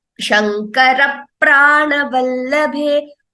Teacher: Though we do not write an extra P there, the P is doubling. So this is called Dvitvam.